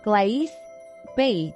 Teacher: In the South, a diphthongal allophone is frequently heard.